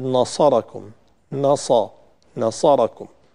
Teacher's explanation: ولقد نصركم، نصركم، النون حرف مرقق مستفل دائما كما هو معروف، الصاد من الحروف المفخمة كما هو معروف، لكن تجاور النون مع الصاد يجعل النون قابلة للتفخيم